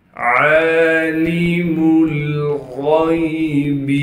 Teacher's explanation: عین پر کڑا زبر ہونے کی وجہ سے عین کو 1 الف کی مقدار کھینچیں گے، لام کو بغیر کھینچے پڑھیں گے۔